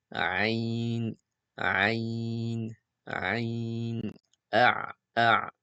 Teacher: Au niveau de son point de sortie, c'est le milieu de la gorge. C'est au même endroit que le ha.